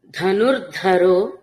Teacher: రెండు ధకారాలు మహాప్రాణాలు తీసుకోవాలండి · మళ్ళీ మూడు ధకారాలు ఇక్కడ మహాప్రాణ ధకారాలు ఉన్నాయి